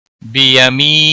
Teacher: بیمی یا مدہ ہے، ایک الف کے برابر کھینچ کر پڑھیں گے